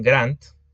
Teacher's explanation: esa D pasó a ser sorda, es decir, se convirtió en T